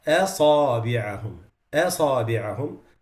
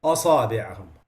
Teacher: The hamza, the first mistake is making it heavy. Making it heavy, especially if it's preceding another heavy letter.